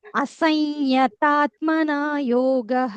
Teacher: అనుస్వారం తర్వాత య వచ్చినప్పుడు ఇయ్య అని అంటాం కొంచెం స్ట్రెస్ చేసి య అని అంటాం